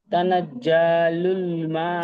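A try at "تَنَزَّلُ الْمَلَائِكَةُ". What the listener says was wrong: যা টান নেই, তানাজ্জালুল, তানাজ্জালুল। নেই, মার উপরে জাবার আছে, হারাকাতের পর আর টান হবে না, লাটা টান হবে। তানাজ্জালুল মালা।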